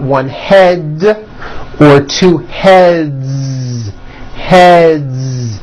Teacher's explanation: Another word, head, ends with a voiced D.